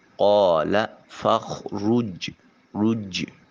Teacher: جیم ساکن ہے، حرف قلقلہ ہے، آواز اپنے مخرج پر لگ کر ٹکرا کر واپس پلٹے گی۔ قال فخرج رج، جیم کی آواز جو ہے وہ گونجنی چاہیے، پلٹنی چاہیے۔